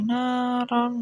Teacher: roknya ini dibaca tafkhim karena ada rok fathah tanwin gitu, dibaca tebal.